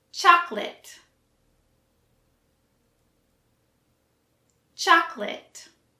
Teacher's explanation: for the last syllable, it sounds more like lit and not lot.